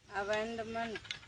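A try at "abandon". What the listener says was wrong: अबेंडन एक के अक्षर छोड़त हो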